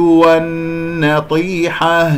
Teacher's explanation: نون مشدد الغنة أكمل ما تكون كما سمعتم